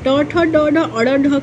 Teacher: ट वर्ग की ध्वनियां जो होती है मुर्धन्य से बोली जाती है